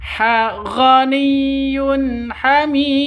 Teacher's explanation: Sudah berlaku ee sudah memenuhi syarat berarti berlaku hukum qalq qalqalah. Kalau diakhiri seperti ini namanya qalqalah kubro ya. Dipantulkan ke huruf dalnya.